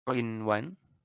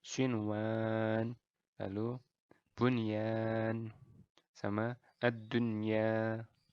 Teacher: Jadi tidak ada melebur, tidak ada dengungan